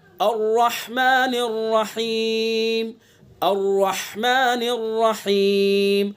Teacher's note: रा को पुर मुंह भर के पढ़ेंगे, रा को मोटा करके, और हा को हलक से अदा करेंगे।